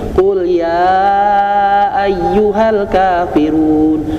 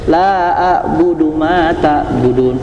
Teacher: Ayat satu empat harakat, ayat keduanya cuma dua harakat. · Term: mad jaiz